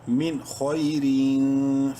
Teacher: خا کو منہ بھر کے پڑھتے ہوئے شارٹلی پڑھیں گے